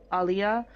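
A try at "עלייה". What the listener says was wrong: Wait, just more emphasis on the final syllable, aliyah.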